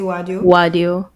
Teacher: You will hear some people maybe sometimes changing the R's to W's